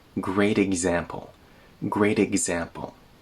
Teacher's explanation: the T in great gets turned into a tap.